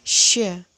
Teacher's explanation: Jadi mulutnya juga dibulatkan sh, lalu dikeluarkan udaranya sh.